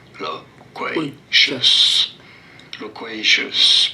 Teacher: You do want to stress on the second syllable, on the qua syllable.